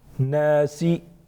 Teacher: نون مشدد غنہ ہوگا، الف مدہ ایک الف کے برابر کھینچیں گے